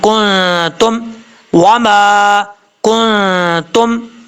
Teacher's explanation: اس کے بعد یہاں پر نون ساکن کا اخفاء ہو رہا ہے، نون ساکن کے بعد تا آ رہا ہے، حروف اخفاء میں سے ہے تو ایک الف کی مقدار غنہ کر کے پڑھیں گے، نون ساکن کا اخفاء ہوگا۔